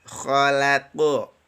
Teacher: kha huruf tebal, lam huruf tipis, qaf huruf tebal